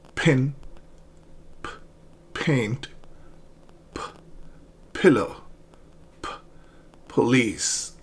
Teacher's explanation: the throat does not vibrate and that is why these consonant sounds are called voiceless. So if you put your index finger on your vocal cords here and pronounce P, nothing happens.